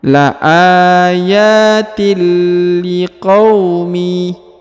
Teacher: huruf tanwin harakat in bertemu dengan lam maka dia melebur ke huruf lam